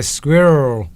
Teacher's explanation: some Americans pronounce it in 1 syllable